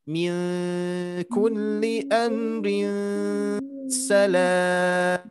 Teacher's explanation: Nah, di sini hati-hati ketika mewasolkan, ibunya mewasolkan ke salam. Nah, ini harus ada dengungan. Barusan dengungannya kurang, didengung lagi nanti.